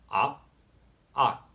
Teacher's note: Note how I sort of catch the sound in my mouth, but don't fully release it. This is really just a consequence of how the unaspirated consonants are pronounced, not really a special rule for Notfi.